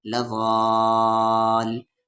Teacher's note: لام پہ زبر لا، واد کو کھینچتے ہوئے لام میں، لغال، یہاں پر مد کے سمبل کے بعد تشدید ہے تو اس مد کو 5 سے 6 الف کے برابر کھینچیں گے